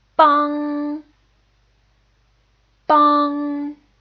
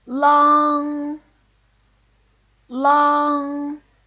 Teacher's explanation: these finals are a single vowel or a group of vowels that ends in NG so the tongue's position is in the back of the throat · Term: back nasal finals